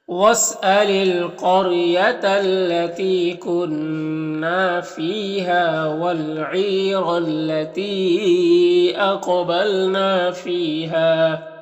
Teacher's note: یہاں پر الف لام حروف قمری عین کے شروع میں ہے تو لام کو پڑھیں گے، الف کو نہیں پڑھیں گے. یہاں پر یا مدہ ہے اور را کو پر زبر، را کو پر پڑھیں گے. · تی میں جو مد ہے مد منفصل ہے، قاف حروف مستعلیہ میں سے ہے اور قاف حروف قلقلہ میں سے بھی ہے، قلقلہ بھی کرنا ہے. نا میں الف مدہ ہے، فی میں یا مدہ ہے اور ہا میں الف مدہ ہے تو ایک الف کے برابر کھینچ کر پڑھیں گے